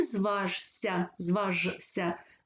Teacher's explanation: с кусає ся у слові зважишся зважишся ж шиплячий с свистячий під впливом свистячого шиплячий змінюється на свистячий з